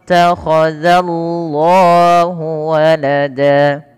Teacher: perlu ditebalkan lamnya, tapi jangan menebalkan zalnya. Tidak dibaca wa qalu takhadzallahu, tapi za tipis baru Allahnya tebal. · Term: lam tebal